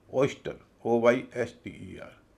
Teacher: OY का उच्चारण हो रहा ओई, तो ओई लंबा स्वर है